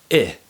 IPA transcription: ɪ